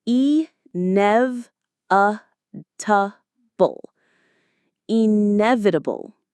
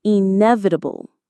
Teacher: The stress is on the nev syllable.